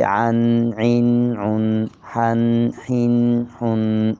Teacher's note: گلے کے درمیان سے دونوں ادا ہو رہے ہیں، رواں سنا جائے عن عین عن، حن حن حن۔